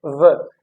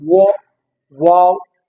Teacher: Now you notice my जो है वो जो है place of articulation को आप notice करें, v. जो लोअर लिप है it is in contact with upper teeth, व एंड जो लिप्स है वो राउंड नहीं हो रहे, where as in the case of वो, वाव, लिप्स जो है वो क्या हो रहे हैं, राउंड हो रहे हैं.